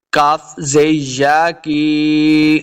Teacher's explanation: اس کاف کو موٹا نہیں کریں گے، کاف زے یا کی، یا مد ہے، اس کو 2 حرکات لمبا کر کے پڑھنا ہے